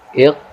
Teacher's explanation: Kita tekan sedikit, kita tekan qaf sukun di sini kemudian sedikit memantul